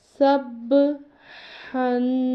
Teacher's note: اب ہم نے سے سب نہیں پڑھنا بلکہ ہم نے سے کرنا ہے سب ہن۔ یہ جو ہا ہے اس کے تلفظ کا خیال کرنا ہے کہ یہ حلق سے ادا ہوتا ہے